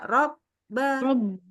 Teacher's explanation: Benar-benar ba, nggak ada suara yang bisa mengalir lagi. Jadi benar-benar berhenti aja.